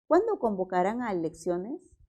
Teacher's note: es una pregunta pero está encabezada con un pronombre entonces siempre va a ser pregunta entonces descendente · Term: tono es descendente